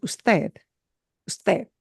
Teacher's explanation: that D at the end sounds like a TH